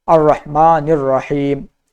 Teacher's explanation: تو یہاں پر رح میں جو ہے ہا کو ظاہر کیا جائے کہ حلق سے کہا جائے